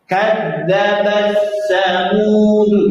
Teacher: Ta-nya hilang, masuk ke huruf sa.